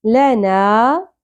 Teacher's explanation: وَإِنَّ لَنَا ل شارٹ ہوگا نون زبر کے ساتھ الف حرف مدہ ایک الف کے برابر کھینچیں گے